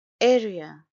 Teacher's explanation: it's a three syllable word and stresses on the first syllable